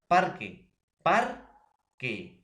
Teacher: Por ejemplo, profesor, yo puedo decir parque, parque. Entonces, la sílaba par, profesor, es la que tiene mayor acento, es la que tiene mayor fuerza de voz